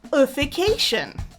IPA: ə fɪ ˈkeɪ ʃən